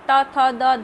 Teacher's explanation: त थ द ध देखिए तालू से चिपक रहा है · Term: त वर्ग